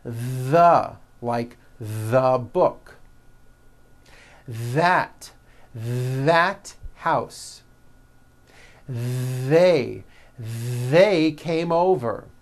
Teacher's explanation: they should all be voiced and all made with your tongue coming through your teeth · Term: voiced th